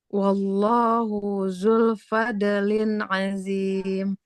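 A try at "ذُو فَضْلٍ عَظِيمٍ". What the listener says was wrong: Tidak zu fadlin. Di situ zal dhamma bertemu dengan wawu harus kita panjangkan. Wallahu zu fadlin azim. Fadlin, lo-nya tidak dodanya tidak memantul.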